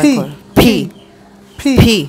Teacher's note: ফিটা উচ্চারণ হবে দুই ঠোঁট চেপে ধাক্কা দিয়ে বাতাস দেবে। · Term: অ্যাসপিরেটেড